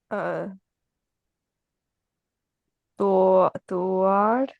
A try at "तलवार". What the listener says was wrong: ए पे जबर पढ़ लें, फिर उसके बाद लाम है।